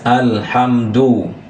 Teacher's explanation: Kalau alham itu bunyi lam sukunnya jelas